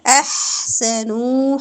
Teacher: ہا سانس جاری ہوگی ہا پہ اور ہا وسط الحلق سے ادا ہوگا